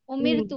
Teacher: जब हमने उमिर तू पढ़ा तो हमारे होठ भी गोल नहीं हुए ना। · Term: बारीक